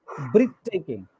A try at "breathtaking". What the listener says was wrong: Breath. Not breathe, breath.